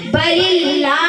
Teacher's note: اگر لفظ اللہ کے نام سے پہلے زیر ہو تو لفظ اللہ کے نام کو باریک پڑھیں گے